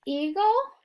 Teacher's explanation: have the GL e or e is going to be silent the schwa sound is going to come before the L